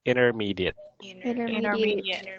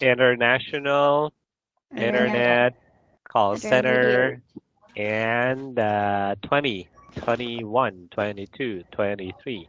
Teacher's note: Some people say it's a silent T, but not really silent. It's more like a soft D or a held D sound.